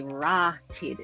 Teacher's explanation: There's a long 'aa' and a short 'i'